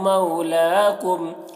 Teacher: واو لین ہو رہا ہے، اسے نرم آواز کے ساتھ جلد پڑھیں گے